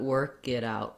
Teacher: what I don't want here is a big burst of air on my K